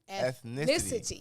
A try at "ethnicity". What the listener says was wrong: she put extra seven syllables